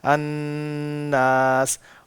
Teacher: ناس میں غنہ بنیادی چیز ہے کہ نون کی آواز کو ہم نے لمبا کرنا ہے